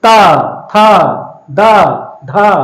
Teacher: जिह्वा दांत में हमारे जाकर के टकराती है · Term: दंत ध्वनि